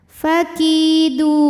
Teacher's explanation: Maka jika berhenti dalnya ini panjang, boleh 2, boleh 4 atau 6 harokat asal konsisten dalam sekali bacaan. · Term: mad arid li sukun